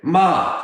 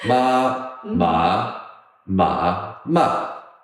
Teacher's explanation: the fourth tone is like your angry voice. You say, ma, stop it. Angry voice. It goes from top to the bottom.